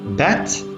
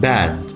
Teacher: Bat, the E is shorter because it's followed by a voiceless ta, while bad, the E vowel is longer because it's followed by a voiced consonant.